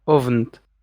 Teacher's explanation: it's Abend with a fricative rather than German Abend with a stop